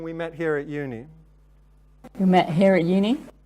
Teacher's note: you see that in both of them the pitch rises · both of these are declarative utterances we would normally assume that this would be accompanied by falling intonation in southern British English and instead here we have Rises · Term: up talk